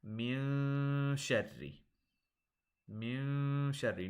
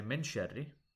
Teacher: Notice that the noon I'm holding in my nose a little bit. I'm saying min sharri.